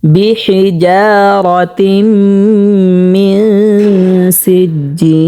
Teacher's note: যদি পাতলা করে পড়ে তাহলে শুদ্ধ হবে না, কারণ জিম হচ্ছে 6 নম্বর মাখরাজ থেকে উচ্চারিত হয়, জিব্বার মধ্যখান তার বরাবর উপরে তালুর সঙ্গে লাগিয়ে। ঠিক আছে, এখানে শক্ত করে পড়তে হবে।